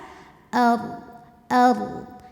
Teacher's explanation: ddnya harus tetap terbaca jadi Sisi lidah kita langsung ke gerahamin jangan sampai mantul